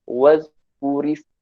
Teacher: Setiap kali wazkuris, kita nipiskan ra tu. Wazkuris ma rabbika. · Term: tarqiq